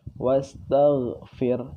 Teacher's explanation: Kalau kita membaca wastaqfir, harusnya gha yang keluar, huruf gha.